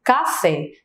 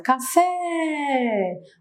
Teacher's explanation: Fé é a sílaba que eu falo com mais intensidade. Se a gente canta, por exemplo, essa palavra, que é uma dica que eu costumo dar, se a gente canta essa palavra, a gente vai perceber que a sílaba tônica ela vai se arrastar um pouco mais. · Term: oxítona